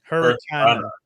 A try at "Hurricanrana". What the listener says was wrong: No, not Hurricana. Hurricanrana. It sounds, yeah, you're basically saying like a Dukin, but yeah.